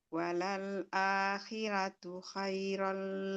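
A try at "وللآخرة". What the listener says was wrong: Ronya ditebalin lagi, ronya. Walal akhiratu, jangan khiratu.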